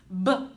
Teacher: even though m is continuous b is a lot quicker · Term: b sound